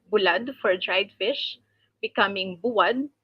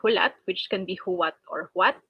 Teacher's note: Another change for intervocalic L. So it becomes W again, but this time between U and A. So it is the vowels are in the reverse order of the previous change.